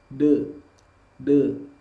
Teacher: Bunyi sukun dari huruf dal adalah de. Kenapa de? Karena huruf dal memiliki sifat qalqalah atau bunyi yang memantul.